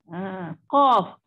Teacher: Qaf betul-betul di pangkal lidah. Pangkal lidah bertentangan dengan berdekatan, berhampiran sangat-sangat dengan anak lidah tu kan.